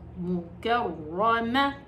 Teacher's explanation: طيب، ميم ضمامو، كاف فتحة را شدة كر، را فتحة را مكر، ميم فتحة ما مكرمة، تا كسرتين تين مكرمتين، والرا هنا مفخمة. ليش؟ لأنها مشددة تشديد بالفتح. إذا مشددة تشديد بالفتح أو مشددة تشديد بالضم تفخم، إذا كانت مشددة تشديد كسر ترقق.